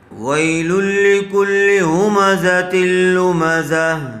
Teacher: وی یا ساکن سے پہلے زبر آیا ہوا ہے، اس لیے یہاں پر لین کا قاعدہ ہوگا، نرم آواز سے جلدی ادا کریں گے